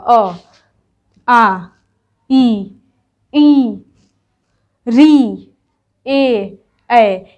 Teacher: ये स्वर वर्ण है जब आप लोग इसको बोलेंगे अ तो अ बोल रहे हैं तो मेरा जो होठ है वो गोल नहीं ना हो रहा है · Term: आवृत मुखी स्वर